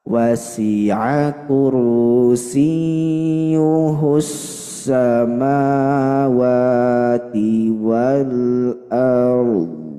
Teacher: harus dimaksimalkan huruf ro-nya dulu, dia punya sifat tawassut, lalu ke huruf dhad dia punya sifat istitalah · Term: iltiqa'us sakinain